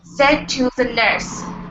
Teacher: word ends with a d Okay Now use the trick here The trick here is not to finish the D sound